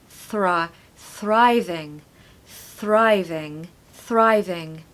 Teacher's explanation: you need a strong R now not like other words we don't want to avoid the r here we want to really say it so Thrive thriving thriving thriving we want to stress the first